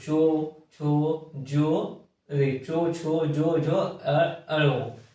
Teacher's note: फिर आता है तालु, मुंह के ऊपर वाले भाग में जीभ सटे उसे तालु कहते हैं। जैसे चो बोलने में हमारा जीभ जो है वो ऊपर तालु में सटता है, तो चो, छो, जो, चो, छो, जो, अड़ो, ये हो गया तालु।